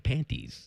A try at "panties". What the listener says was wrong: You were pronouncing the T the first time, and then the second time you just said panties. I think panties is worse. When you articulate the T.